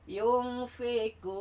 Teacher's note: Mendengung. Tidak jelas nunnya, mendengung ya. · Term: Ikhfa